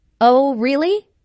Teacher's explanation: notice the rising intonation on really this shows that the speaker is surprised